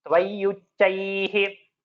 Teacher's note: It is double cha, both alpa prana.